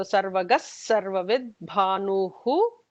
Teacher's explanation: there will be an extra S, emphatic S for the Sarvavidbhanu because of the preceding Visarga.